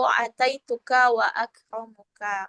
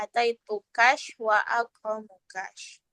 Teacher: menambah huruf shin setelah huruf kaf mukhatab ta'nis yang diwakafkan